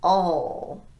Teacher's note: When we have an L at the end of a word, we use a dark L, which is low in the mouth. And there's a little vowel sound that helps us transition into that dark L sound. · there's a little vowel sound that helps us transition into that dark L sound. The dark L sounds like this.